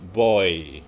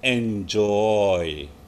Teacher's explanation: O bunyinya O, I bunyinya I. Tapi ketika digabung nggak O, I, tapi OI. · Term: diftong